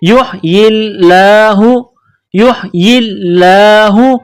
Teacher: لفظ اللہ کے نام سے پہلے زیر ہے تو لفظ اللہ کے نام کو باریک کرنا ہے · یہاں لام کے اوپر تشدید ہے تو لام میں سختی کرنی ہے. کڑا زبر ہے, ایک الف کے لمٹ میں کھینچنا ہے